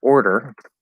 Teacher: syllable is going to be or our colored o and then you have to go into that flap d and pull into the er · an r before it so in a word like order so in this case we're doing an r colored o r colored o in or